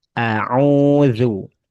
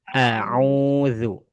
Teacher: Au a-nya jangan au jangan dipanjangin. Hamzah itu punya sifat namanya syiddah. Syiddah itu kuat ya sehingga bacaannya tidak boleh diayun.